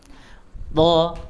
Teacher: Sama dengan huruf ta, sama dengan huruf dal. Ujung lidahnya ada di gigi atas, gigi seri atas bagian dalam. · huruf to mempunyai sifat tebal juga, isti'la, idbaq, ya. Kemudian jadi diberikan ketebalannya juga.